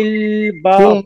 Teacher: ফিল বাহরি র নিচে জের চিকুন করে পড়বেন